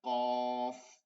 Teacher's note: জিহ্বার গোড়া তার বরাবর তালুর সঙ্গে লাগে, কফ, অফ, ভারী আওয়াজে, ঠিক আছে। পলকের শেষের অস্থানটা দিয়া একটা বাড়ি দিয়ে চলে আসবে, এইটা এখানটা লাইগা যাবে, এরপরে এখান থেকে উচ্চারণটা চলে আসবে, অফ।